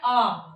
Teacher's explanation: एक हमारा स्वर जब हम बोलते हैं आ तब पूरा मुंह खुलता है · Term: विवृत